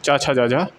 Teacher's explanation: चा छा जा झा तालब्य होता है